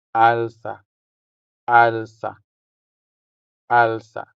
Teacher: The stress is on the first syllable, making the first a sound longer than the second one.